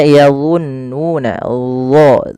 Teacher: sifat isti'la yaitu pangkal lidah kita terangkat, yang kedua yaitu sifat idbaqnya, lidah itu lebih melekat ke langit atas. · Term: huruf dha